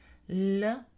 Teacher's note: La consonne L, donc la liquide, est prononcée plus en avant en français qu'en anglais.